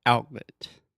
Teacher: so this is what we call a stop T or if you want to be very linguistically nerdy a glottal T so you're almost making a T sound your tongue everything is